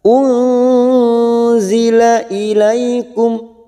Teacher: nun sukun bertemu zain, ikhfa hakiki, kita samarkan bunyi nun sukun 3 harokat